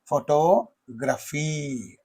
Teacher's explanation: in this photography and photographer, in these two words, the second syllable receives the primary stress